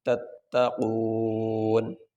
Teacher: آخری حرف تو پڑھا جائے گا لیکن اس کے اوپر جو حرکت ہے وہ نہیں پڑھی جائے گی، آخری حرف کو ساکن پڑھیں گے، تتقون۔